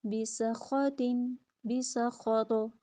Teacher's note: تو پہ کلکلا، خا کو پر، سین میں سیٹی